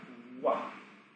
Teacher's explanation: we start with our lips in an O shape, and we begin voicing it as we separate our lips apart. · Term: W sound